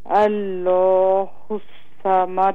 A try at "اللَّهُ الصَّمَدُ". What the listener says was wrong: اس کو اور منہ بھر کے پڑھیں الله الله الله الصمد